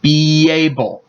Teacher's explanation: So a Y is added and it'll sound like be able. You can hear a little bit of a Y between the words instead of a space. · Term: Linking